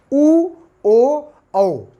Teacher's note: एक तो कहते हैं कि अगर ओंठ गोलाई में गए, समझिएगा, हमने बोला ऊ, तो जब बेटा ऊ बोलते हैं तो ये जो ओंठ होते हैं ये एक शेप बनाते हैं जिसको आप कहते हैं वृत्ताकार, ऊ ओ औ। अगर हमारे ओंठ वृत्ताकार शेप में नहीं जाएंगे तो आप ऊ और ओ और औ नहीं बोल पाएंगे। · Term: वृत्ताकार स्वर